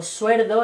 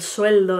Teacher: La neutralización de RL en posición implosiva.